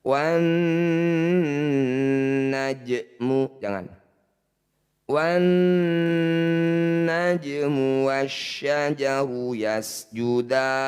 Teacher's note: Jadi jim pantulkan kecil saja, mengalir saja. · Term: qalqalah sugro